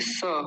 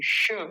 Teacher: ये स होता है, ये श होता है। ये दांतों की सहायता से बोला जाता है, ये तालू की सहायता से।